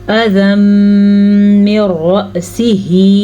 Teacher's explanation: تو دونوں حروف کو ہم آپس میں ملانے کے ساتھ ساتھ غنہ کریں گے، اسے کہتے ہیں ادغام بالغنہ۔